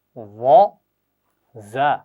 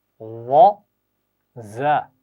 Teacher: पहली आवाज़ मोटी है और नरमी से पढ़ी जाएगी बगैर सीटी के यानी, और दूसरी आवाज़ बारीक है और सीटी के साथ पढ़नी है।